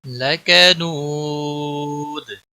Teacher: نون نو واو مدہ ہے، ایک الف کے برابر کھینچ کر پڑھیں گے